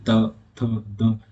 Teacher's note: आप ता बोल के देखिए, त थ द, तो आपकी जीभ जो है ना, जीभ वो दांतों से टच हो रही होगी, ठीक है, जो जीभ है वो दांतों से टच हो रही होगी, इसलिए हम दंतव्य व्यंजन बोलते हैं।